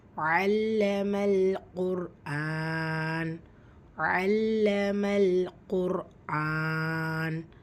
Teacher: தும்மா இருக்கறதுனால அந்த ரா சுக்குூன வல்லினப்படுத்தி ஓதணும்